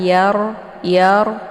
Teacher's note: Nah, karena ra ini sifatnya takrir, makna takrir itu ada getaran ya. Jadi itu digetarkan, tapi tidak boleh lebih daripada 2 kali ya.